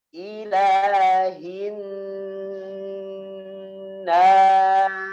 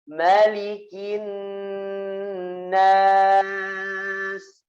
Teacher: Jadi di hidung n-nya, kemudian hurufnya dibuka, ya, di mulut, ya, diletakkan pada makhrajnya. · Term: nun tasydid